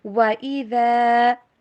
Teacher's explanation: ذال کا جھکاؤ زا کی طرف نہ ہو، ذال نرمی سے پڑھیے